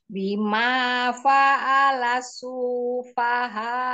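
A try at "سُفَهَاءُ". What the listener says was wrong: Jangan, ini jangan panjang. Su ini jangan panjang. Langsung ke fa. Sufaha.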